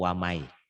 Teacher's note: Ditulisnya ada bunyi nun matinya, ada bunyi N-nya, dibacanya N-nya hilang. Ditelan huruf berikutnya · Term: idgham